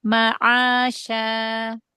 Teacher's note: Huruf ain jangan seperti hamzah.